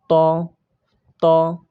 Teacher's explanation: এটা হলো 11 নম্বর মাখরাজ। জিহ্বার আগা সামনের উপরে দুই দাঁতের গোড়ার সঙ্গে লাগাইয়া